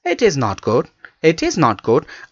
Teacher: I'm saying good with the very much low voice means I'm giving the falling tone am I'm falling my tone at the end of good yes